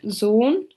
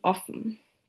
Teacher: The closed mid back rounded vowel can be heard in words like Sohn and the shorter counterpart in offen